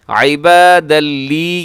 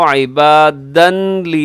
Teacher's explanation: کونوا عبادا لی، عبادا لی، یہاں تنوین کے بعد لام ہے، لام حروف یرملون میں سے، یہاں بھی یہاں کیا ہوگا؟ ادغام ہوگا لیکن بغیر غننے کے